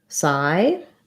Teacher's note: have the vowel ah the psy is just a strange spelling the p is silent and the y says i um the i diphthong